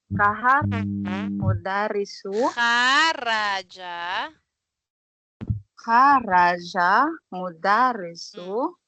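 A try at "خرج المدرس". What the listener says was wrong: Kharajal. Kasi mayroong alif and lam. Kharajal.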